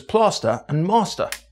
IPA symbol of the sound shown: ɑ: